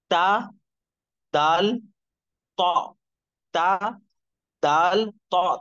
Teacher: जबान की नोक और ऊपर के दो दांतों की जड़